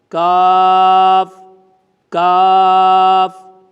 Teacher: زبان کی جڑ اور تالو کا سخت حصہ وہاں پر زبان لگے گی تو یہ ادا ہوگا